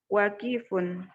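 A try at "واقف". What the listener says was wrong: Wakifun. Ya, nggak apa-apa. Wanya panjang ya.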